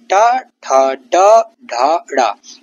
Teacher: ट वर्ग के वर्ण मू मूर्धन्य हैं। जीभ की नोक तालु से टकराती है इनको बोलते हुए। कठोर ध्वनि होती है इनकी।